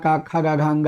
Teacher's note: अकु विसर्जन या नाम कंठा, माने छोटा बड़ा का खा गा घांगा, ये सब कंठ से बोले जाते हैं